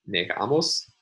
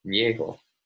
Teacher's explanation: the stress is on the penultimate syllable in negamos, but on the initial syllable in niego